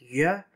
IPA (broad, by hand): ɥ